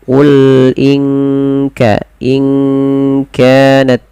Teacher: perlu ditahan nunnya sepanjang dua harakat baru masukkan ke kaf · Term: ikhfa hakiki